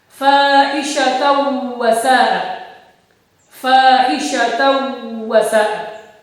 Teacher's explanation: Tanwin ketemu huruf wawu, dibaca idgham bi gunnah, dibaca berdengung.